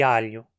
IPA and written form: aʎu (alho)